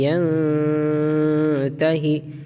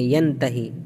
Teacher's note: نون کی آواز کو ناک میں چھپائیں گے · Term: اخفا